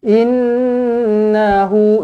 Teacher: Innahu, nun sabdu wajibul gunnah, dengungkan 2 harokat. Hu ada waw kecil, panjangnya 2 harokat juga.